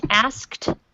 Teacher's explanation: I make sure that t sound on the end is very strong